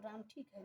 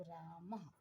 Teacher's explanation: जैसे राम को लिखना है, अगर वहाँ हम विसर्ग लगा दिए तो राम नहीं कहेंगे, रामः हो जाएगा। इसमें ह की ध्वनि थोड़ी आती है विसर्ग में। तो राम की जगह अगर केवल हम राम ऐसे लिखें तो राम ठीक है, लेकिन ये विसर्ग हम उठा करके लगा दें तो राम नहीं पढ़ेंगे, तब रामः पढ़ेंगे।